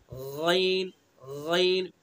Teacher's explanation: अदना हल्क यानी हल्क का मुंह की तरफ वाला हिस्सा